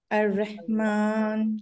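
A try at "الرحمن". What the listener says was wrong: না, তোমার হটা ভিতরে চলে গেছে, তুমি গলায় ধাক্কা দাও, বুকে না। আর রহমান।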